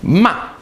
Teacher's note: Your voice goes down sharply.